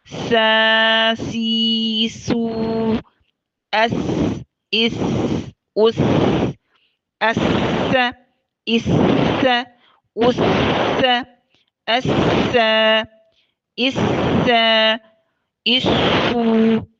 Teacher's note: سین کی آواز پست اور باریک ہوتی ہے، ہمس کی وجہ سے پستی اور استفال کی وجہ سے باریکی ہوتی ہے